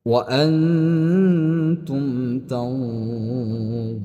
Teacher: ketika mad thabi'i berada di akhir kalimat atau di akhir ayat disebabkan karena ayat, berhenti karena ayat atau berhenti karena wakaf, maka dia dipanjangkan. Boleh panjang sampai enam harakat hukumnya berubah menjadi mad arid lisukun.